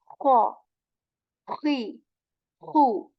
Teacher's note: you have to intentionally make this scratch and abrasion in the sound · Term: scratch sound